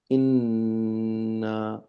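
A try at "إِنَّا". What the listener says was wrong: ইন্না সাথে আলিফ আছে তা আলিফের টানটা আপনি দিলেন না তো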